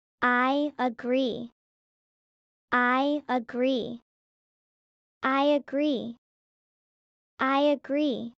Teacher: a word beginning with a vowel sound. Add a subtle Y sound